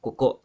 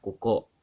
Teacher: go and listen to that last glottal stop